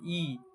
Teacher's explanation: ई बोलिएगा तो आपका जो है मुंह लगभग बंद रहेगा। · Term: समृद्ध स्वर